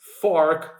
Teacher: front teeth. So in a word such as fork, for example, the initial sound of f requires this bottom lip of ours touching our front teeth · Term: labial dental sounds